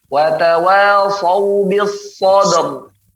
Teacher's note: Kemudian tadi ayat ke-17 wa tawasau bis sabr. Ketika diwaqafkan maka ra sukun sebelumnya fathah, dia tebal.